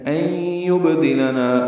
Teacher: نون ساکن کے بعد یا آنے کی وجہ سے ادغام ہے، ادغام ناقص ہے، غنہ ہوگا. این یبدلنا با ساکن پہ قلقلہ ہے، نا الف مدہ ہے، 2 حرکات لمبا ہے.